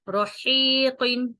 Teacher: یہ جو ہا ہے جو بغیر نقطے کے ہا ہے، یہ وسط حلق سے پڑھا جاتا ہے اور نرمی سے پڑھا جاتا ہے